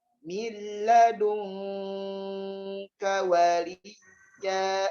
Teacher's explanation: Ringankan suara ikhfa nun bertemu kaf dengan cara dilepas bibirnya ke belakang.